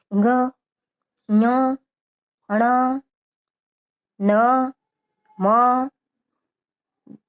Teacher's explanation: इनका उच्चारण के समय हम नासिका का भी प्रयोग करते हैं। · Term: पंचम वर्ण